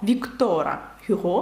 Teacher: Віктора Гюго правильніше так тому що наголос на останній склад французькою